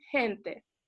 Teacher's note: gente caribeña que no dice gente como diría un chileno sino que dicen gente y eso también son sonidos aspirados